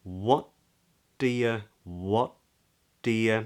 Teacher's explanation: think of because the the next word begins with a d we don't have to say the T sound at the end of what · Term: assimilation